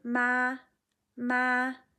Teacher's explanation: the first tone is high and flat, which doesn't mean it has to be really high. · your first tone, for example, ma, is distinctly higher and flatter than the other tones that you are saying in the same sentence.